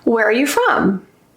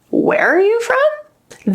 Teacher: if I use a rising intonation where are you from that indicates that I either don't believe you or I'm shocked in some way